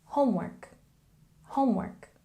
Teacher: again, a stress on the first syllable, homework, homework.